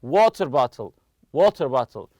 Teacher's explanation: nouns they are made of two separate nouns the stress goes on the first part of the compound noun · We stress the word water on the compound noun.